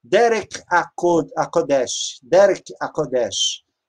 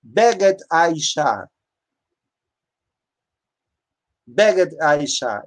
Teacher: sendo que o acento é colocado no segundo substantivo